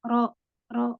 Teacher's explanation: Ro itu ujung lidah dan sedikit punggung lidah bertemu dengan langit-langit di atasnya. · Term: huruf ro